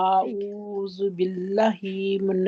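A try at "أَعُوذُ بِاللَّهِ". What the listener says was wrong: ہی آپ کر دیتے ہیں، آگے اللہ کے نام کو لمبا کرنا ہے نا، لام کو، اللہ کے لام.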